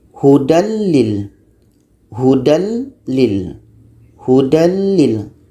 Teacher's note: jadi bunyi nun mati tanwin ini masuk dengan tidak berdengung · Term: Idgham bilagunnah